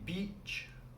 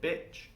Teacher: So when we say beach, with the E sound, we have to stretch our mouth. And when we say bitch, with the I, our mouth is more tight and more closed.